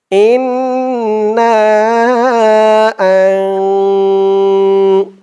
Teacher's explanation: পরে ইকফার 15 হরফের এক হরফ যা আসছে হামজাহ নুন জবর গুন্নাটা নাকের ভিতরে যাবে